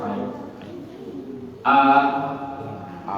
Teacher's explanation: Hamzah itu berada di tenggorokan paling dalam